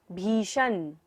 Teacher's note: मूर्धन्य श, तो हमें मूर्धा से उच्चारण करना है।